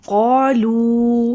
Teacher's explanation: قالو، دیکھیں ان دونوں ورڈ پہ الف اور واو مدہ آ رہا ہے تو ان دونوں کو لمبا کریں گے۔ قاف مستعلیہ حروف میں سے ہے، اس کو موٹا پڑھیں گے۔